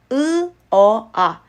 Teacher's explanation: 고모음에서 저 모음으로 발음할수록 입이 점점 벌어지는게 느껴질 거예요. 안는요. 혀를 최대한 아래쪽으로 해야 되다 보니까 입을 더 벌리는 경향이 있어요. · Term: 혀의 높이